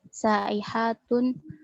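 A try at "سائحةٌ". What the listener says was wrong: Cuma ini tadi panjang terlalu panjang sa'ihatun. Kalau sa'ihatun hunna. Jadi dibedakan mana itu yang mana yang mat dan yang tidak supaya ini. Karena kalau dibaca saihatun itu jamak.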